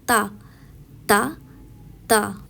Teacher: زبان کی نوک جب اوپر والے دانتوں کے ساتھ ٹکراتی ہے تو تا ادا ہوتا